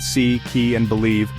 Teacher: This length helps distinguish words. I, as in fleece is long, high and front, heard in C, key, and believe.